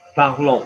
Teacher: We don't pronounce the S on the end of parlons. Why not? Because there's not a vowel after it.